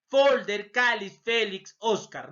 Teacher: La mayor fuerza de voz, penúltima sílaba. La última sílaba está terminando en R y no está terminando en N, o vocal, entonces le voy a poner la tilde. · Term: graves o llanas